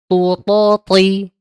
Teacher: Ingat huruf tho ketika diucapkan triknya adalah tegangkan huruf tho, sama dengan kita nyebutkan ta. Hanya saja kalau huruf tho vokalnya o, kemudian ketika diucapkan dia mengangkat pangkal lidahnya beserta dengan tengahnya